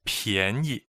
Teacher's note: the first word, 便, is second tone, and the second word is the neutral tone